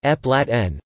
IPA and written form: ˌæpəˈlætʃᵻn (Appalachian)